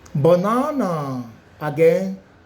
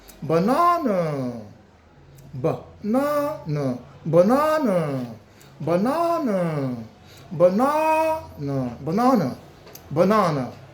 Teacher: Do not forget the stress is located at n a and don't forget the word stress. Your voice must be high up a bit.